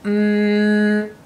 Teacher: lips together and the sound coming out through the nose and if we block the nose as we say that sound then it stops the sound altogether so we'll go mmm block our nose and that stops the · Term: nose sounds